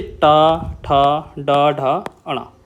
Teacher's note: ऐसे शब्द जिसमें हमारी जीभ जो है वो लौट जाती है। बिल्कुल लौट जाती है। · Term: मूर्धन व्यंजन